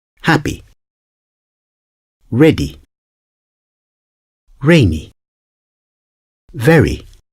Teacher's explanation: ending in the letter y for example happy ready rainy very it's really easy to pronounce because it's a quick sound and it's like somewhere in the middle between short and long